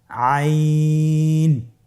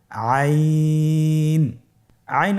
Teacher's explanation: হরফটি কন্ঠনালীর মধ্যখান থেকে উচ্চারিত হয়।